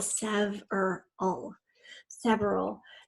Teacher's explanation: we tend to shove the middle syllable in several but it is three syllable